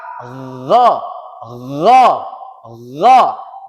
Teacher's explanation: gha ini juga tempat keluarnya masih ada di halqi, ada di tenggorokan